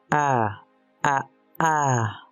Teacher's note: hice una pausa entre una A y otra A. Esa pausa es Aleph. Se conoce como parada glótica o plosiva glótica. · Aleph es una parada glótica. Esto significa que no suena.